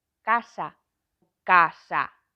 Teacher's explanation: en casa o A final lese un pouquiño máis pechado e próximo a un E que unha normal.